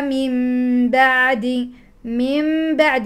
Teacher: نون ساكنه بعده باء اقلاب